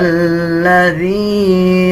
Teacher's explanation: ذال اور لام کو ملا کے پڑھا جائے گا